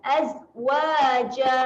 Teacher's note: Azwajan, kalau kita nak wakaf, kita nak berhenti, kita akan panjangkan saja 2 harakat, matikan bunyi tanwin dia. Jadi bunyi dia azwaja.